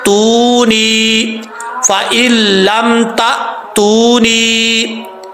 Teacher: ता के बाद हमजा साकिन है, हमजा साकिन झटके के साथ पढ़ा जाएगा